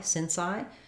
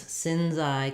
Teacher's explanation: I'm going to hear more of a Z as I connect those two.